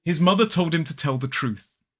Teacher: mother has the voice sound truth the unvoiced sound